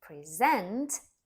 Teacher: stressed on the second syllable is a verb